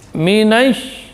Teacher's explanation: Ya, dorongannya dari tengah. Kemudian rakhawah hamas, dia mengalir udara dan suara. Serta menyebarnya udara, yaitu at-tafashshi, menyebarnya udara di mulut. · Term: Sya